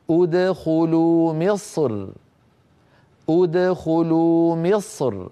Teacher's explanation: فيفخم المتكلم الصاد ثم مباشره يرقق الراء من غير تكلف